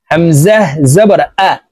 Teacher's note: হামজা হলকের শুরু থেকে শক্তভাবে উচ্চারণ করতে হবে।